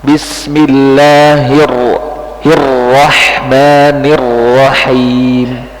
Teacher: jadi ro yang membuat tebal itu bukan monyongnya tapi pangkal lidahnya belakang